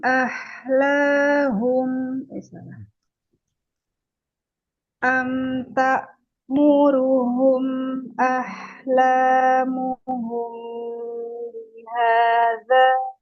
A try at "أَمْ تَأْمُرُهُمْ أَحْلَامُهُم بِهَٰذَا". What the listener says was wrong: Nah, hu jangan ho. Ho, hu. Coba ini sempurnakan lagi dhammahnya. Am ta'muruhum ahlamuhum bihadza ahlamuhum hum hum kalau kurang monyong hum bunyinya. Hum ya.